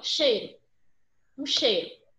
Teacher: Primeiro eu percebo na pronúncia que o I se apoia no E. Tanto é que a gente quase não pronuncia, ó, cheiro. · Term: semivogal